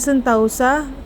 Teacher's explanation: Kata anggota diucapkan anggota, sentosa diucapkan sentausa. Perubahan ini terjadi pada bunyi vokal tunggal o ke vokal rangkap au, tetapi tetap dalam pengucapan satu bunyi puncak. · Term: Diftongisasi